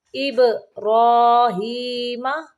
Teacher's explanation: با کو قلقلہ کریں گے اور را کو موٹا پڑھیں گے